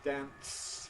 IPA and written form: dæns (dance)